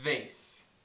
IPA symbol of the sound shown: v